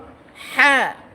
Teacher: গলার নিচ থেকে কন্ঠনালী যে মাঝখান সেখান থেকে বল